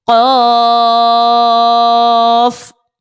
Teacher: قوف حرف مستعلیہ کا آ رہا ہے، صاد حرف مستعلیہ کا ہے تو ان کو پر پڑھیں